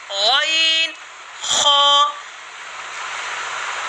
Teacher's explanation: अदना हलक, यानी हलक का वो हिस्सा जो मुंह की तरफ वाला है, यहाँ से 2 हुरूफ अदा होते हैं, गैन खा।